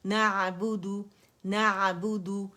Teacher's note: عین بہت کلیئر اور واضح نکلتا ہے توسط کے ساتھ. نعبد, با پہ گولائی دیں گے, دال پہ گولائی دیں گے, ٹھیک ہے.